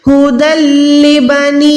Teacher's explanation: دال کو میں ڈائریکٹ لام کے ساتھ ملا رہی ہوں کیونکہ یہاں پر لام شد والا ہے، تو ہم نے یہاں پر ادغام کرنا ہے بغیر گنے والا. دال کو ڈائریکٹ اسلام کے ساتھ ملائیں.